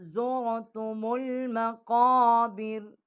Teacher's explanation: یہ قاف جو ہے یہ بڑا قاف ہے، یہ منہ کے درمیان سے اس کا مخرج ہے، یہ منہ پر کر کے موٹی آواز کر کے پڑھیں گے · تا کے اوپر کھڑی زبر ہے، اس کو ایک الف جتنا ہم کھینچیں گے